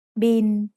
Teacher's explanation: It's the word bill, but we read it in Thai as bin. Thai doesn't naturally have the L sound at the end of a syllable, so it changes to sound like the letter N.